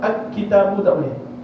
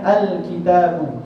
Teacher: izhar qamari, sebab memang alif lam itu dibaca secara jelas